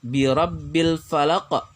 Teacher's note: Ada pantulan atau getaran pada huruf qaf. Hukum bacaannya disebut qalqalah kubra. · huruf qaf ini pantulannya atau getarannya terdengar ketara sekali atau jelas sekali